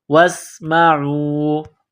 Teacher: واو کو سین کے ساتھ ملانا ہے، سین میں سیٹی کی آواز پیدا کریں گے